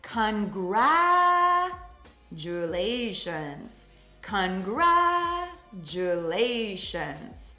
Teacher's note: So it's important to get the stress right on that second syllable. We really stress, and then we have a secondary stress on the lations.